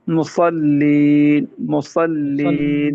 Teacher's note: لام باریک ہوگا صاد موٹا ہوگا.